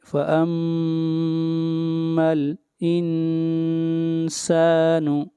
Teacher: نون کے اوپر اخفا، نون ساکن کے بعد نہ حروف حلقی ہیں، نہ حروف یرملون ہیں، اور نہ حرف اقلاب با ہے، اس لیے اخفاء حقیقی ہوگا۔